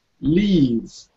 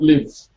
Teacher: You have to prolong that vowel now. Leave, not live.